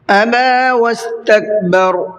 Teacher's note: ابا واستکبر، ابا با کے اوپر کھڑا زبر ہے تو اس کو بھی 1 الف کی برابر کھینچ کر کے پڑھنا ہے